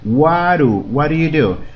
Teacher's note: Estamos haciendo el sonido T o D como una R y decimos what do you do.